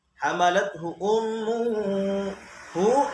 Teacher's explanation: berarti ummuhu gunnah, didengungkan